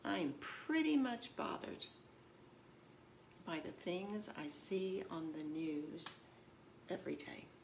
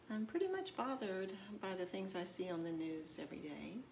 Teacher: even though this is a statement it's not a question my tone is a little bit questioning · Do you hear that slight questioning tone in my voice